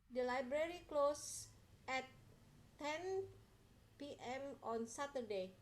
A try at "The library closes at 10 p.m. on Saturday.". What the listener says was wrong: Hati-hati ya, itu bacanya harus closes, ada S-nya ya. Coba diulangi.